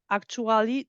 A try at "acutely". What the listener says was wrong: Actually, that's acutely. I think you said accurately. acutely.